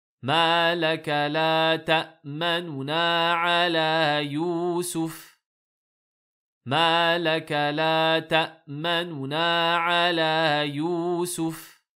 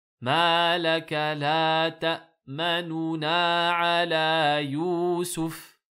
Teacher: on accélère un petit peu la haraka, la voyelle, la dhamma du premier noun, en baissant un petit peu le son